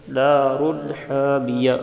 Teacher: را کو موٹا پڑھیں گے کیونکہ اس پر دو پیش ہے